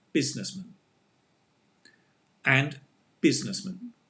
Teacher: it's the same pronunciation, because the man is with the schwa sound